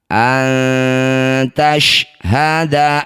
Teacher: Nun sukun bertemu ta disebut bacaan namanya ikhfa aqrab. Bunyi nun dengungkan dua harakat. Ketika dengung lisan kita sudah bersiap bunyikan ta. · Antashhada arba'a, ro sukun didahului fathah, disebut bacaan ro tafkhim atau ro yang harus dibaca dengan tebal. Angkat ujung lidah sampai menempel di langit-langit mulut, getarkan ujung lidahnya sedikit.